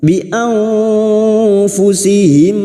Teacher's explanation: nun sukun bertemu fa, ikfa hakiki, kita samarkan bunyi nun sukun dan mendengung selama 3 harakat. Siap-siap pada saat mendengung menyamarkan bunyi nun sukun, kita siap-siap membunyikan huruf depannya, yaitu huruf fa.